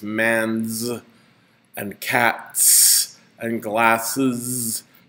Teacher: it assimilates in the voice to the noun that it uh attaches to